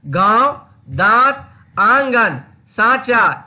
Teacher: ऐसे स्वरों को उच्चारण नाक और मुंह से होता है और उच्चारण में लघुता रहती, जैसे गांव, दांत, आंगन, सांचा इत्यादि। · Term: अनुनासिक